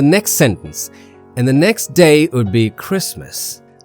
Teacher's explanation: The stress pattern is next day Christmas. Only these three words take the stress while the others don't.